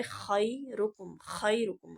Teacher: خا جہاں سے ادا ہوتا ہے وہ حلق کا سٹارٹنگ ہے، وہ حلق کے سٹارٹنگ سے خا ادا ہوتی ہے۔ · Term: ابتدائے حلق